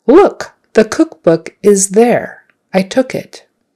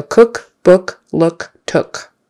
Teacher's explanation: it's not a short U, it's somewhere in the middle, it's like someone punched you in the stomach, So look, book, cook, cooking, those all have that horseshoe U sound, Look, not Luke, not Loke, not Luck, that'd be a different word.